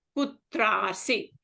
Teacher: Of tra and of asi become a long a.